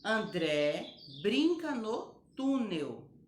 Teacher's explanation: as palavras André e túnel têm o acento agudo e o som fica mais aberto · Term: timbre aberto